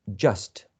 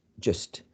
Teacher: In the case of just, you can also have a strong form, right? And the strong form can have a wedge, just. And the weak form could have a schwa.